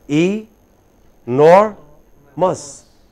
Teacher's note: the stress is on nor. So, E is hardly heard.